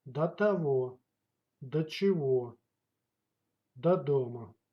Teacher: And in speech it's pronounced as да.